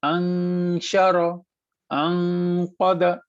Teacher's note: जब नून खाली आता है, उसके बाद अगर शीन आ जाता है तो हम इसे छुपाते हैं, ठीक है ना। काफ आ जाएगा तो भी हम इसे छुपाएंगे।